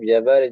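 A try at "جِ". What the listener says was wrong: জের। না, নিচে হলে জের, উপরে হলে জাবার। জের জি হলো, তাহলে কি হলো? যা জি।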